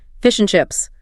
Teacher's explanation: the word and often just becomes N, or even just N.